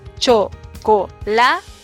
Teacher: Vemos que la sílaba tónica está en la.